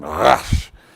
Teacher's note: a a almost a German kind of again rash uh and it's the sound of an R but more guttural it's further back in your throat